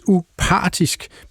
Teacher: at det udtales upartisk med tryk på par